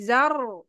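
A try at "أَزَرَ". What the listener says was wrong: jangan jadi Zar ujung lidahnya nyentuh ke eh ini gusi atas jangan Zar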